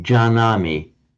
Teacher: What happens is that the gnya drops out, and that is what accounts for the form jānāmi.